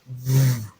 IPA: v